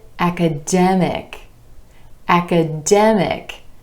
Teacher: When we add our IC ending, we get academic, academic. And our stress shifts to the e vowel sound right before the IC ending